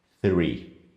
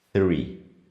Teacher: Para articular esse som, você precisa usar a língua e tocar nos dentes superiores. Three. Por mais que pareça para o seu ouvido que não está acostumado com isso, que seja um som de T ou um som de F, ele é um som diferente. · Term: o T e o H juntos